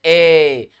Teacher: जिन स्वरों के उच्चारण में मुख द्वार आधा बंद रहता है